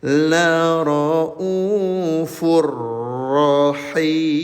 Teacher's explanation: maka bunyi tanwinnya dileburkan ke huruf ro.